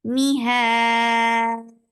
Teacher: We are giving temporary sukoon because of the waqf, and this temporary sukoon turned this two counts long vowel into four counts